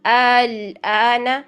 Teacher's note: دوسرے حمزہ میں تسہیل لائیں گے، اس کو ہم نرمی سے ادا کریں گے، پہلے حمزہ کو تحقیق سے ہی پڑھیں گے